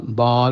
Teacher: Ya, malah bal bukan bul, bal tebal itu a bukan o ya